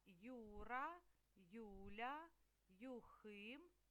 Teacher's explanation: Ось така буква ю буква ю читаємо й у ю запам'ятайте ю ділиться на й у на початку складу і слова це на два звуки